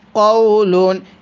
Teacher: এখানে জবরের পরে সাকিন এটা লিনের হরফ তাহলে এখানে টান হবে না